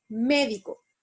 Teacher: en el caso de las palabras esdrújulas la sílaba tónica es la antepenúltima · Las esdrújulas se acentúan entonces en la antepenúltima sílaba, como en la palabra médico.